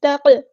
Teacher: light یعنی باریک letter ہیں تو دھیان سے ادا کرنا ہے، قاف ساکن ہے تو یہاں پہ قلقلہ بھی ہوگا